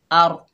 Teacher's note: हमज़ा के ऊपर ज़बर है, आगे रॉ साकिन है, हमज़ा को रॉ से मिलाकर रॉ पुर पड़ी जाएगी